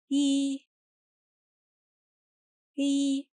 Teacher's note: as a long vowel taking time of two counts